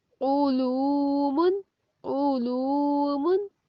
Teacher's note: देखें पेश है तो होंठ गोल हुए और किसकी आवाज आई, ऊ की। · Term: आइन